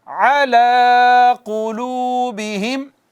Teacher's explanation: عین وسط حلق سے ادا ہوتی ہے